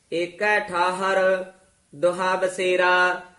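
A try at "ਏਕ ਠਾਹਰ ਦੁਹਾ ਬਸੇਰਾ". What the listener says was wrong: दोहा छेती उच्चारण करना, दोहा नहीं कहना, होड़े नाल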